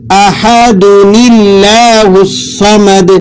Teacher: تنوین کے بعد حمزہ وصل ہو تو وہاں ایک نون کے نیچے زیر لگا کر اگلے حرف سے ملاتے ہیں، اور تنوین کی جگہ صرف ایک حرکت باقی رہ جاتی ہے اور اس کو نون قطنی کہا جاتا ہے.